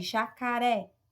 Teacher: jacaré é a última sílaba tônica oxítona